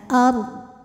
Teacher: huruf ra sukun dibunyikan secara tafkhim karena sebelumnya ada fathah, maka ra-nya tebal. Ard, bodnya harus tetap terbaca.